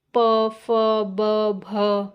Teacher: जिनका उच्चारण होठ से हो उसे हम ओष वर्ण कहलाते हैं